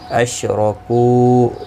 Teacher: را زبر کی وجہ سے پر پڑھا جائے گا